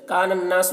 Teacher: نون کو نون سے ملا کر پڑھ رہے ہیں، الف لام دونوں کو نہیں پڑھ رہے ہیں۔ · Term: حروف شمسی